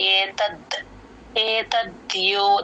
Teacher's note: ఇది కంఠంలో నుంచి ఏతద్యోనిని తకి దాని జాయిన్ చేసి చెప్పాలి ఏతద్ ఏతద్యో ద కింద య వత్తు కూడా క్లియర్ గా వినిపించాలి